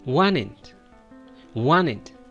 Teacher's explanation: you're going to skip the T sound and just give support to the N sound